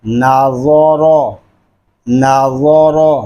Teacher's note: کے نیچے زیر ہو تو را کو باریک پڑھتے ہیں۔ یہاں نون کو باریک، را اور را کو پر پڑھیں گے